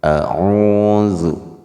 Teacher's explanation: A-nya pendek dan zu-nya juga pendek, tetapi o-nya 2 harakat panjang, a'udzu. Jika pendek zu-nya maka harus segera ke huruf depannya bi, zubi.